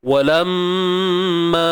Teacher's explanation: Mim yang bersabdu kita wajib dengung. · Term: Wajibul ghunnah